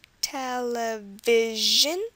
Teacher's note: So these are examples where the stress is on the second from last syllable.